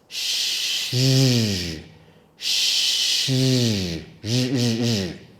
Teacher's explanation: It is like the sh sound sh, but we add our voice.